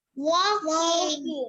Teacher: Remember, the L is silent.